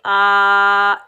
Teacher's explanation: हमजा के ऊपर खड़ा ज़बर, एक अलिफ की मिकदार खींच कर अदा करेंगे